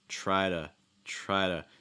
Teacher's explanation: that o in two gets reduced to like a schwa